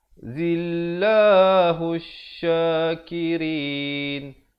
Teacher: Zillahu syakirin. Zillah, lafz jalalah dibaca dengan nipis, datang sebelumnya baris kasrah 2 harakat